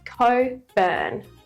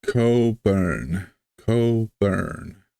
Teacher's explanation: So we don't roll the R into earn, burn. It's an open mouth.